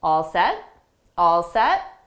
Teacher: we'll just use two words with a rising intonation to show it's a question